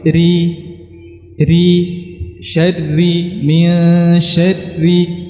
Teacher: Jadi maka lidah juga dia tidak kaku, ya. Jadi kita lemaskan lidah kita saat mengucapkan huruf ra yang tipis